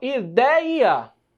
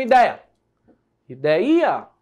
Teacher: E aí eu vou ter essa tonicidade maior na penúltima sílaba. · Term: paroxítona